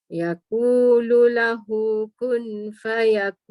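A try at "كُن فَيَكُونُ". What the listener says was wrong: Dia tak boleh kun. Kita dah terbiasa kita cakap kun fayakun. Dia sebenarnya ada dengung.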